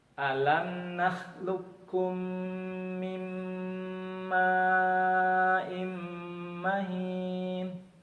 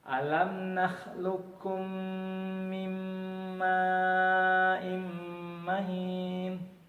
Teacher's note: Dia tidak lagi nampak qalqalahnya, jadi hilang qalqalahnya. Dia huruf qafnya melebur dalam huruf kaf, seolah huruf kaf itu bertasydid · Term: idgham mutaqaribain